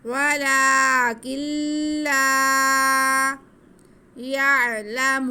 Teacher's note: لام کے پر زبر ہے، آگے الف ہے، تو یہ الف مدہ، اس لیے ہم اسے کھینچیں گے